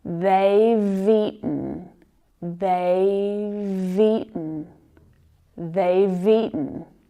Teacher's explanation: out loud and we're focusing just on the contraction they've eaten if you link that V consonant sound to the next word which is also very very natural in spoken English linking those sounds it's a little easier to pronounce